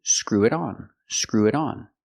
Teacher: a fast D because it's between vowels